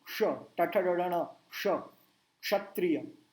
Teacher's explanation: मुंह गोल करते हैं, क्षत्रिय, श, और टंग पूरी पीछे जाएगी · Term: षटकोण का श